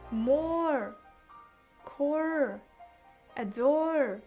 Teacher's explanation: O plus R, E. Ол бізде O деп созылып айтылады.